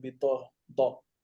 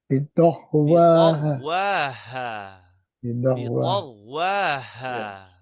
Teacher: It's ta, ta, not ta. It's ta, but you are pronouncing as if the da, bidah. There's a voiced sound. It's not voiced.